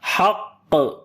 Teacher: جو قلقلہ یہاں پر ہوگا اس وقت یہ قلقلہ سٹرونگسٹ ہوگا، یعنی سب سے زیادہ سخت قلقلہ ہوگا حق، کیونکہ جب قلقلہ والے حروف کے اوپر شد آتی ہے · ہا کو گلے کے درمیان والے حصے سے پڑھیں گے اور قاف کو موٹا پڑھیں گے حروف استعلاء کی وجہ سے